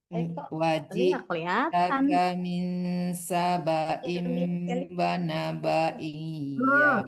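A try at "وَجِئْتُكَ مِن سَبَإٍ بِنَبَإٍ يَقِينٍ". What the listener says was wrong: Bina bukan bana, binaba'in yaqin.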